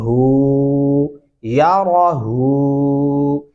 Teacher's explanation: हा उल्टा पेश हु या राहू। इसको हू बारीक हा नहीं पढ़ेंगे, हू सीने से भारी आवाज निकालेंगे